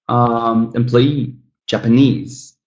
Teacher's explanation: The third syllable stressed